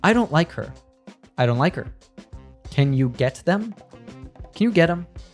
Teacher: Often times we remove the first consonant sound in pronouns like his, her, or them.